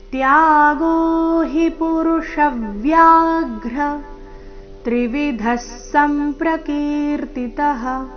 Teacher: ಮೂರನೇ ಚರಣದಲ್ಲಿ ಪುರುಷಾಗ್ರ ಗ್ರ ಮೇಲೆ ಸಹ ಆಘಾತ